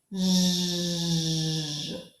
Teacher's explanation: Touch your tongue behind your upper teeth on their ridge. There's a bony ridge there. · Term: J sound